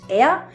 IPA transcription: ɛa